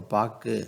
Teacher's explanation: ஒரு சொல்லின் இறுதியில் வரும் வல்லின உகரம் தனக்குரிய ஒரு மாத்திரை அளவிலிருந்து அரை மாத்திரை அளவு ஒலிக்கும்